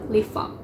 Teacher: Yang pertama itu adanya deletion sebelum vowel, jadi dihilangkannya entah itu vowel, entah itu konsonan yang diikuti oleh vowel, seperti lift up. Lift up itu dalam dialek ini dibacanya lift up, jadi T-nya tidak dibaca sama sekali